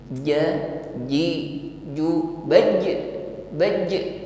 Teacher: huruf Jim ini sifatnya syidah ya kuat ketika mengucapkannya maka tidak diiringi dengan desis